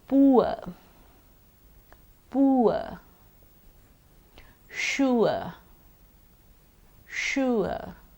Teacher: this diphthong consists of an o sound followed by a schwa sound